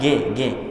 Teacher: Kalau G dari pangkal lidah seperti huruf kaf atau qaf. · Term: huruf G